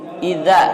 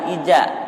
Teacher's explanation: Idza, jangan ija. Idza, adanya di ujung lidah nih, bertemu dengan gigi seri atas.